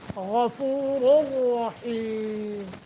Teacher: غین کو موٹا، را دونوں موٹے